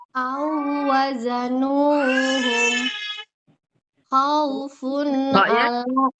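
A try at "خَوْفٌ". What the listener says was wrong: Kho-nya ada ngoroknya, Bun. Khaufun alaihim. Ada kotor-kotornya, Bun. Nyambung Bun. Coba lepas nunnya lepas. Jangan lepas Bun. Khaufun alaihim. Khaufun. Jangan terlalu banyak punnya. Jangan terlalu banyak itunya mengalirnya nunnya. Khauf, satu anggulkan kepala saja. Khaufun alaihim.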